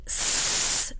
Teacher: So s, for example, is a fricative, meaning that the air is used on the tongue and put down a narrow channel to create that s sound